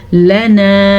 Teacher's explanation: इस लाम को लंबा नहीं करेंगे क्योंकि लाम के ऊपर सिर्फ ज़बर है, लेकिन नून ज़बर अलिफ ना, अलिफ मद्दा की वजह से हमने इसको खींच के पढ़ा